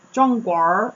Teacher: there's like an R after things where there wouldn't be an R sound in Nanjing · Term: Erhua